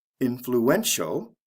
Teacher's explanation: the stress comes right before the ending